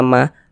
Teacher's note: Mad Thobi'i panjang dua harakat karena di sini ada Alif sebelumnya ada harakat fathah